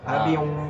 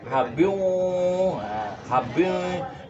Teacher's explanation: untuk hukum bacaannya idgham biguna itu dia agak mendengung di hidung.